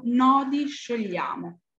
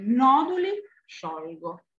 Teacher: Parliamo sempre di un cursus ritmico, quindi basato su un'alternanza di sillabe toniche e sillabe atone. E noi abbiamo una tonica, 2 atone, una tonica e una atona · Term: cadenza piana